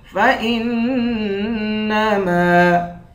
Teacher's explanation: حمزے کو نون سے ملا کر نون پر غنہ کریں گے، میم کے بعد الف ہے، الف حروف مدہ ہے، ایک الف کی مقدار کھینچیں گے